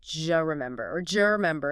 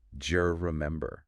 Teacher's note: They create a D sound, the J sound in judge, and the vowel in you often reduces to schwa or disappears. So do you remember can absolutely sound like je remember or je remember in rapid casual conversation. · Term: assimilation and reduction combined